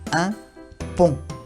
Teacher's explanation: Pareciera que el sonido sale de la nariz. On. En realidad resuena en la nariz. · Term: Muy nasal